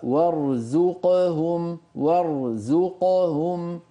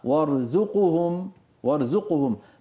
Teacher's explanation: ضمت بسبب عدم إرجاع الشفتين إلى وضعهما الطبيعي